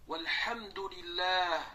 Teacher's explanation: Alloh lafzi ikki harakat cho'zildi